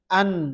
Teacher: ketika kita mengucapkan huruf nun, an, rongga hidung dipakai.